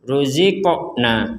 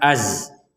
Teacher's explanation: huruf qaf yang sukun kita wajib bacanya mental atau dipantulkan